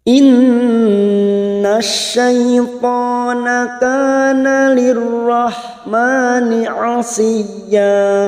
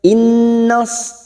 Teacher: gunnah musaddadah kita dengungkan dan ditahan selama 3 harokat.